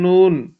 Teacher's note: نون میں اوپر والی نوک جو ہے وہ اور اوپر والی سائیڈ ان مسوڑوں کے ساتھ لگ جاتی ہے